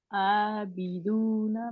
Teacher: आ लंबा खींचना, क्यों खींचना, दो काउंट बराबर, क्योंकि अलिफ सगीरा छोटा अलिफ है इसके ऊपर, यानी कि खड़ी जबर है, ठीक है।